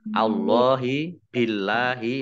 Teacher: Allah tipis karena harokat di depannya kasroh